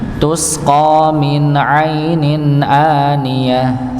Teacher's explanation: Nah, ini sama juga idhar, tanwin bertemu dengan hamzah. Bertemu dengan hamzah maka dibaca idhar. · Bertemu dengan hamzah maka dibaca idhar. Aniyah dibaca dengan sukun menjadi ha.